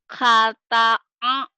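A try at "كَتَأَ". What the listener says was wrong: Kata. Bukan ha, ini ka. Kata'a.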